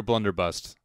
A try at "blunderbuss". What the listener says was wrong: For starters, it's a blunderbuss, not a blunderbust. Yes, you said blunderbust. It is a blunderbuss. A blunderbust would be like a Italian artist who tries to make a sculpture of somebody.